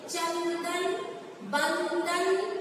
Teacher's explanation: जीभ का अग्रभाग आपके तालू को छू रहा है, उस तरीके से अनुस्वार का उच्चारण होता है। और अनुनासिक कंठ के पास होता है।